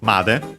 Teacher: the particle made, on its own accented on the ma